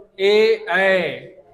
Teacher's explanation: कंठ और ताल जब दोनों मिल जाते हैं तो उससे ए आए, मतलब कि कंठ से भी बोला जा रहा है और ताल से भी बोला जा रहा है, ए आए, हल्का जोर यहाँ भी लगेगा और हल्का जोर ताल में लगेगा, है ना?